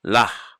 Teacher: I overpronounce the hey because the dagesh is in there.